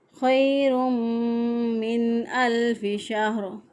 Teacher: गुन्ना करते हुए हमने इसको अदा किया खैरुम मिन अल्फि शहर, मिन अल्फी, नून साकिन के बाद हरूफ़ हलक़ी आ गया अगले कलमे के शुरू में, तो लिहाजा यहाँ पर हम इजहार करेंगे